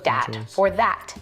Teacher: using something like a d sound for where you see a written th